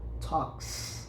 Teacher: clap, for example, ends with a P sound, so the S that follow is pronounced as S